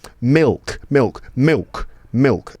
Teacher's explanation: that L sound in the middle of words might sound like a W sound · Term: dark L